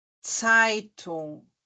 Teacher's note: ele não vai ter o som do Z em momento algum tá ele vai ter o som de um t e de um s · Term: som do t e do s